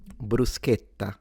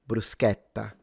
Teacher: Standard Italian, bruschetta. So, closed A, bru- sche- tta.